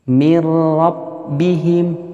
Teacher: Mir rabbihim, tidak didengungkan, langsung dimasukkan. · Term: idgham bilagunnah, idgham bila gunnah